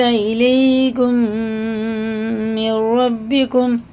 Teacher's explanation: میم ساکن کے بعد میم آ رہا ہے تو غنہ کر کے پڑھیں گے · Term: ادغام شفیع